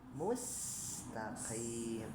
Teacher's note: Nah qafnya kembali tebal ya